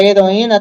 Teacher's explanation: duas vogais mas que estão em sílabas separadas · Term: iato